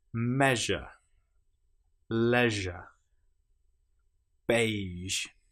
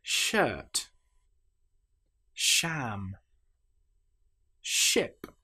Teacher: Now, with the j, we engage our vocal cords. With sh, we don't. It's quite similar to ch, which we did earlier, but with sh, you'll notice it's very slightly softer, mouth a tiny bit more loose.